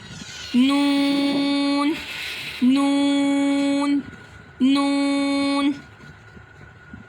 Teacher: अब ये सामने के दांतों पर हमारे जो ज़ुबान है, ज़ुबान का किनारा लगता है तो नून अदा होता है · جب زبان کا کنارہ ثنایا، ربائی اور انیاب کے ساتھ لگے گا تو یہ ہمارے پاس حرف نون ادا ہوگا